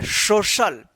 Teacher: सी का श उच्चारण होगा, तालव्य श